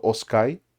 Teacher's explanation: this I at the end is like really, really not said a lot. It yeah, so it almost always just sounds like os.